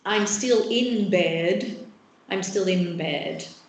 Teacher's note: you've got the bilabial feature that gets anticipated on right so the N acquires the bilabial feature it's still a nasal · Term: regressive assimilation